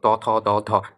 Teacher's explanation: তো তারপরে দন্ত ত, থ, দ, ধ, জিহ্বার সাথে দাঁতের স্পর্শ হয়